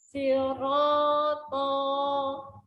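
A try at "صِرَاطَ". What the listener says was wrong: Jangan dipanjangkan, tapi dia naik. Sirata.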